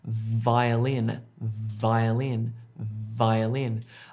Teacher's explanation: What it is, when you make the v sound, as in violin or violence or vomit, for example, two terrible words, is you have your top teeth on your bottom lip, v, v, v. And you make this humming sound with your throat there.